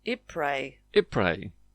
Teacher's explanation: Not an /i:/ like ylang ylang, but an /ɪ/ - /ˈɪprə/, and the S is silent.